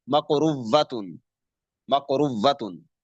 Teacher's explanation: ایسی صورت میں اس حمزے کو واو کریں گے، مقروءۃن، مقروءۃن، پھر واو کو واو کے اندر ادغام کر دیں گے، مقروءۃن، مقروءۃن۔ پہلے حمزے کو واو کریں گے، پھر واو کو واو کے اندر ادغام کر دیں گے